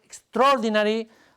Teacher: if you say a word in English like extraordinary notice how the stress syllable extraordinary occupies almost all of the duration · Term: stress based Rhythm